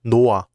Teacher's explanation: 히읗 is never linked to the next syllable. It always just disappears. So this word is not pronounced 노하, but 노아.